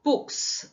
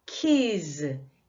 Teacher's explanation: 무성음 다음에 s가 붙게 되면은 books, 스 발음이 나고 keys, 유성음 다음에 s가 붙게 되면 z 발음이 난다